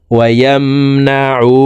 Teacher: এই উ এখানে এক আলিফ টেনে পড়তে হবে, কারণ পেশের বাম পাশে জজমালা ওয়াও মদের হরফ, ডান দিকের হরকতকে এক আলিফ টানিয়া পড়িতে হয়।